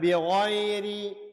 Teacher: Bi ghairi bacaan lin zi sini ra tarqiq. Ra baca nipih kerana ra baris kasrah bahagian bawah.